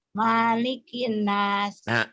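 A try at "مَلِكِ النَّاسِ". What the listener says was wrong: Pintar tapi namanya pendek ya. Nih. Malikin nas ya pendek. Iya, nunnya tapi ditahan gunah ya. Maknya pendek ya. Kalau maknya yang panjang di Fatihah. Di sini pendek. Malikin nas.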